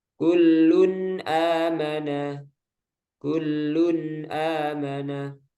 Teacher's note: Nah, ini contoh ketika nun sukun atau tanwin bertemu hamzah. Jadi tanwinnya dibaca jelas. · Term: izhar